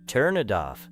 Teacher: A learner may expect 3 separate parts, but in natural speech, it may sound like turn it off. The final sound of turn moves into it. The final sound of it moves into off. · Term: linking